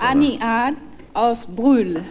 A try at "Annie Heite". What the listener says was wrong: Sie hat das so französisch ausgesprochen. Annie Heite aus Brühl. Ja, Brühl ist richtig.